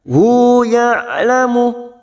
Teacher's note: huruf ain sukun. Ya, mempunyai sifat tawasud, jangan samakan dengan hamzah